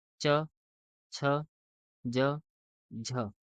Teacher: च ज झ इसको बोलने में तालू का हेल्प लेना पड़ रहा है